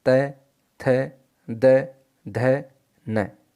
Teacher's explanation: उसके बाद है लृतु लसानाम दंतः, लृकार, लृ टू अर्थात तवर्ग, त थ द ध न, फिर ल और फिर स, तो इनका उच्चारण स्थान होता है दंतः अर्थात दंत, इसलिए इन्हें दंत्य वर्ण कहा जाता है